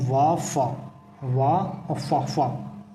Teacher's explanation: दंत्योष् जिसका उच्चारण स्थान होता है दंत और ओष्ठ से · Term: दंत्योष्ठ